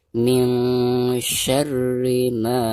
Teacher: bacaan ma di sini itu harus dibaca 2 harokat karena dihukumi mad tabi'i.